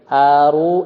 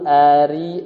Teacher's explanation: Kalau domah tebal, kalau kasrah tipis ya.